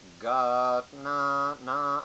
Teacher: So the first anudata is not raised, it's a low pitch.